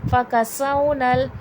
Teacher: سین میں حرف صفیر ہے، سختی سیٹی کے ساتھ پڑھا جائے گا